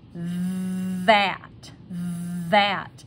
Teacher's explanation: My tongue is still going between my teeth to say this, but I'm using my voice for this one. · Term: hard voiced TH